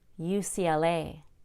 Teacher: Add a Y between the C and L for a smooth transition.